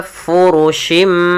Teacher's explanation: mengganti suara bunyi nun menjadi suara bunyi mim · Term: iqlab, iklab